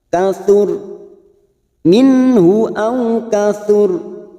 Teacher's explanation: Lalu kita wakaf yang terdapat huruf ro, kita baca tafkim atau tebal karena sebelumnya ada dumah